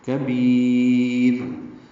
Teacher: کاف باریک ہے، بی یا مدہ ہے، با کو لمبا کریں گے، را باریک پڑھیں گے وقفاً کیونکہ اس سے پہلے یا ساکن ہے.